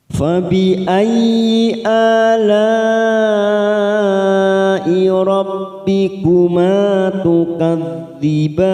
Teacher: La ada mat yang bertemu dengan hamzah dalam satu kalimat, mat wajib mutasil, kita samakan dengan sebelumnya, 5 harakat kita panjangkan.